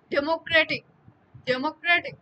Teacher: ডেমোক্রেটিক যখন আমরা বলতেছি তখন এই শব্দটিতে শাসাঘাত পরে হচ্ছে তৃতীয় সিলেবলে, এই যে টি।